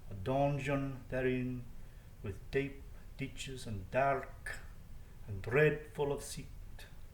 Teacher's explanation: And once again, he has a caesura, he has this pause in the middle of the line, so there's a kind of swinging feel to each line